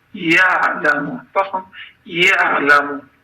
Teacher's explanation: Baxın burda ayın hərfi sükunlu hərfdir və oxunmalı deyildir. Biz yə sözündə fəthəni sanki boğaza gətirib saxlayırıq və burda sükun edirik.